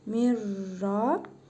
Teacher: İdğam-ı bilə-qunnə qaydasına görə ra hərfini şəddəli tələffüz edirik, nun hərfini isə oxumuruq